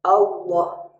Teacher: lafaz Allah kalau ditransliterasi tidak bisa karena bunyi lamnya harus tebal, Allah. Sedangkan kalau ditransliterasi jadi Allah.